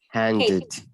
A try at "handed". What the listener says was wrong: this is handed. So the ed at the end now reads ed. So it's handed.